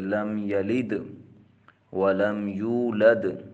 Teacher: Number 3 اظہار شفوی۔ میم ساکن کے بعد حروف تہجیہ میں سے با اور میم کے علاوہ اگر کوئی اور حرف آ جائے تو وہاں اظہار شفوی ہوگا